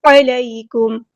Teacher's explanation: کاف ہم سمپل پڑھیں گے، باریک لیٹر ہے. میم ساکن کی آواز پہ یہاں پہ ہم ٹائم نہیں دینا، میم ساکن پر اظہار شفوی ہو رہا ہے